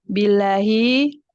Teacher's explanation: lamnya dibaca tipis karena sebelumnya kasrah